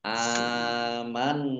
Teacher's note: Nun tasdid bacaan gunah dibaca mendengung ditahan dua harakat